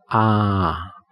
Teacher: This one has the widest mouth position and is ah.